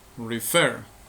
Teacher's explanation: La sílaba tónica, la sílaba con mayor fuerza de voz es fer, refer, no decimos refer.